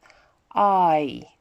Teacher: So it starts with ah, big open mouth, ends with flat sound, a flat mouth. I. This one is a long one as well.